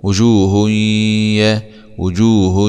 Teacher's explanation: هاء ضمتين مع الادغام بغنه في الياء المفتوحه